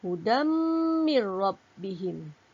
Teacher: Tanwin bertemu mim, hukumnya idgham bi gunnah. Kita bacalah dengan dengung.